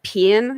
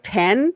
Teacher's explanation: like in Georgia, people would say like pin instead of pen,